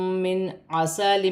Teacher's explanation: نون ساکن میں غنہ نہیں ہوگا کیونکہ عین حروف حلقی میں سے ہے